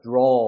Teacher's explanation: 어가 턱이 조금 더 벌어지면서 어를 잡아 끄는 느낌으로 발음을 해야 되는 거예요